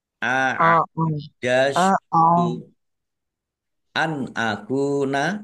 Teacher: Nun sukun bertemu dengan huruf alif. Bacaan izhar dibaca jelas.